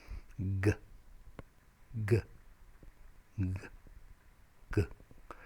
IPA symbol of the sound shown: g